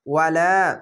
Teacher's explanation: যাবার পাশে খালি আলিফ এক আলিফ টেনে পড়বেন।